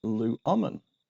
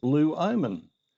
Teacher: In the subjunctive, it is luomen. The difference being the short vowel omicron changed to the long vowel omega. It's gone long.